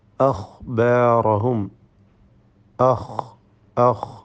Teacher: അദ്നൽ ഹൽഖ് എന്ന മഖ്റജിൽ നിന്നും അൽ ഗൈൻ വൽ ഖാ എന്നീ 2 അക്ഷരങ്ങൾ ഉത്ഭവിക്കുന്നത് · ഗൈൻ, ഖാ ഈ 2 അക്ഷരങ്ങളും റഖാവത്തോടുകൂടി അല്പം അയവ് വരുത്തിക്കൊണ്ട് ഉച്ചരിക്കേണ്ട അക്ഷരങ്ങളാണ്. ഇവക്ക് സുക്കൂൻ നൽകി ഉച്ചരിക്കുമ്പോൾ അതിൻ്റെ കൃത്യമായ മഖ്റജ് തിരിച്ചറിയാൻ നമുക്ക് സാധിക്കുന്നതാണ്.